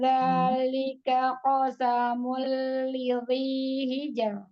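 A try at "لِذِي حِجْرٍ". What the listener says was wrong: Za-nya tidak lidhi, tidak ditebalkan. Lidhi, tidak lidhi.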